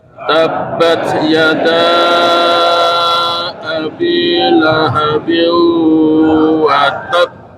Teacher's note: kita naikkan sedikit suara pada huruf ta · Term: dinaikkan sedikit